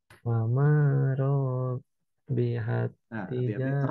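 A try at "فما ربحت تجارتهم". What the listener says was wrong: Ro-nya kepanjangan. Ro-nya masih kepanjangan.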